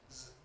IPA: z